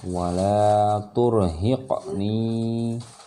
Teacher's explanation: qafnya tidak terlalu diperjelas karena dia masih di tengah kalimat